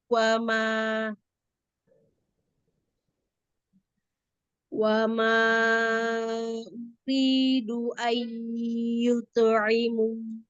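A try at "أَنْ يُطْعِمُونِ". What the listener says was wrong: Yuto pantulannya mengikuti hurufnya ya karena dia tebal juga pantulannya.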